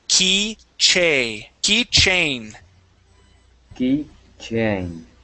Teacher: instead of saying chen, we're going to use a long A sound.